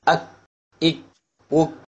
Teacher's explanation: this letter is slightly in front of the காஃப், அதாவது the inner most part of the tongue towards the mouth touching the roof of the mouth opposite it